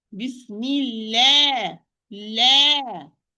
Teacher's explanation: The lam here is light because it's preceded by kasra. So the alif, which we are talking about here in this part, is going to be light because it follows the letter which precedes it.